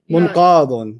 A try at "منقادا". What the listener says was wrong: No, that's not alif. No, it's munqadun. Yeah, that's because you're trying to figure out what the other last word was. No, munqadun. منقادن. منقادن.